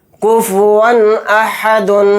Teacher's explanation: تو یہاں پر بھی اظہار کا قاعدہ ہوگا، یہاں پر بھی ظاہر کر کے بلا غنہ کا جلد پڑھیں گے